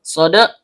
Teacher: Lam, ujung lidah bertemu dengan langit-langit bagian depan. Shod, ujung lidah bertemu dengan gigi seri bawah